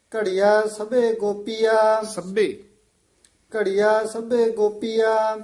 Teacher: ਇਹ ਘੜੀਆਂ ਨਹੀਂ ਕਹਿਣਾ ਬਿੰਦੀ ਲਾ ਕੇ